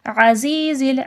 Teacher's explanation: عین کو صحیح سے واضح کریے گا، حمزہ کی طرح عزیز نہیں کریے گا۔